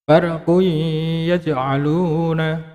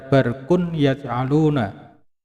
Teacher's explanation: dhammah tanwinnya dileburkan ke dalam huruf ya, ya. Dhammah tanwinnya dileburkan di dalam huruf ya. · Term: idgham bi gunah